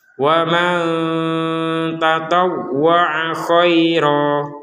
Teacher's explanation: ro-nya dibaca panjang 2 harokat